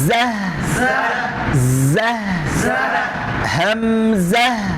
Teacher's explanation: গোলতাটা থেমে যাওয়ার কারণে হা হয়ে যাচ্ছে